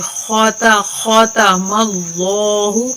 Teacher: لفظ اللہ کا قاعدہ ہے کہ اس سے پہلے والے حرف کے اوپر زبر یا پیش آ جائے تو لفظ اللہ کو موٹا کر کے پڑھتے ہیں، اگر زیر آ جائے تو باریک پڑھتے ہیں. تو ادھر میم کے اوپر زبر ہے تو لفظ اللہ کو موٹا کر کے پڑھیں گے